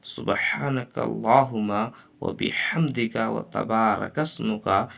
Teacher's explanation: زبان کی جڑ کو تالو کے سخت حصہ سے لگا کر کاف ادا کریں گے، اور کاف باریک ادا کریں گے